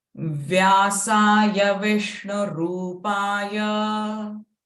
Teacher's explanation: it is not Vishnu, it is Vishnu, retroflex sh